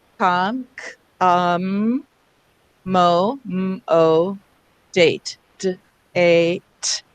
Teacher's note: the word is accommodate. And in that case, we're actually stressing the com. So that's, you know, we rarely stress a prefix, but we do.